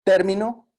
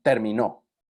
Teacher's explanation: término tiene esta plantilla, fuerte, débil, débil. Mientras que terminó tiene la otra plantilla, tun, tun, tun. Es débil, débil, fuerte. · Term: acento